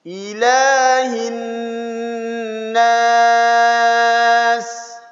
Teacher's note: idgham syamsiyah, itu nunnya ditasydidkan, ditahan dulu